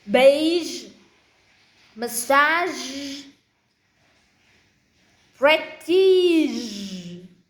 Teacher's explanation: Now there are only a few words that has voice j at the end.